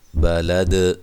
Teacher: بلد، دال حروف قلقلہ میں سے ہے، دال پہ قلقلہ کرنا، ہلا کر پڑھنا ہے